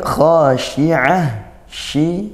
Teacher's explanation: shi ya makhrajnya ditempatkan di tengah lidah. Khasyi'ah dengan ain dan ditutup tak marbutah, dibaca waqaf berbunyi ha.